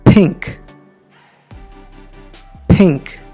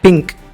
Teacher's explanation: అయితే English accent లేదా American లేదా బ్రిటిష్ యాక్సెంట్కి వచ్చేసరికి ఇది ఒక అన్వాయిస్డ్ ప్లోసివ్ ఫోర్టిస్గా మనకు కనిపిస్తుంది.